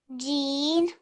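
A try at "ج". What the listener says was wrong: It sounds to me as though you're saying Gene, so you're ending on a noon sound, but it's actually Jeem.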